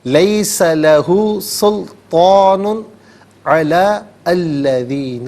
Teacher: تنوین کے بعد علا یعنی عین آ رہا ہے، حرف حلقی آ رہا ہے، تو یہاں پر اظہار کریں گے، یعنی غنہ اخفا نہیں کیا جائے گا، نارملی پڑھیں گے لیس لہ سلطان علی الذین۔